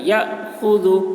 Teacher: یہاں پر جزم ہے، الف کے اوپر جھٹکا لگے گا